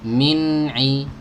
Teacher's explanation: Ya, jadi nggak boleh kita min ilmin langsung pindah ke huruf ain. Sabar ya, nunnya dialirkan dulu sejenak karena bainiyahnya itu dia punya sifat bainiyah.